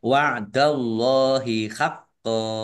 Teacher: Allahnya dibaca tebal karena harokat di depannya fathah. Lam fathah berdiri mat tobi'i.